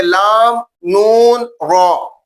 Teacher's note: زبان کا کنارہ اور اوپر والا تالو کا اگلا حصہ، تالو کے اگلے حصے زبان کا کنارہ لگے گا تو یہ تینوں حروف ادا ہوں گے، لام، نون، را۔ مخرج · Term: حروف تعارفیہ